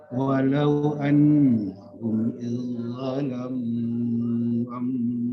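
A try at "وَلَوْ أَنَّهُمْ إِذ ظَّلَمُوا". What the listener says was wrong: Diulang Pak Haji, saya dengarnya annalahum, tidak ada la di situ. Annahum saja.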